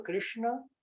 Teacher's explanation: esse Krishna aí tem que enrolar um pouquinho a língua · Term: retroflexo